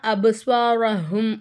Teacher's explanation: பாவை நம்ம அசைச்சி ஓதணும், ஏன்னா இது கலுக்கலாவுடைய சட்டத்தில் வரும்